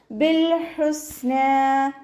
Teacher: ബിൽ ഹുസ്ന ലാമിന് half സുക്കൂന് കൊടുക്കുക. ഹ തൊണ്ടയുടെ മധ്യഭാഗത്തു നിന്നാണ് വരുന്നത്. വസത്തുൽ ഹൽക്കിൽ നിന്ന് അതിൻ്റെ സൗണ്ടിനെ ഹംസയായി പോവാതെ ശ്രദ്ധിക്കുക.